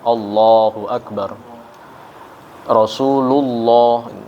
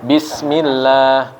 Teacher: kalau sebelumnya kasrah maka dia tipis lamnya